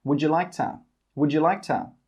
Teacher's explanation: We don't say 'would you'. We put those together and we say 'wouldjuh'.